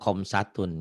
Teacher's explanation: Orang Jawa kho itu jadi ko. Ko jadi ho, go jadi ho, goiril jadi hoiril gitu ya.